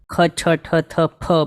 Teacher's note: આ જે આપણે બોલીએ સેકન્ડ લાઈન તો આપ નોટ કરો કે જ્યારે આ ખ બોલતા હોઈએ ત્યારે મોઢામાંથી હવા કાઢવી પડે એવા છે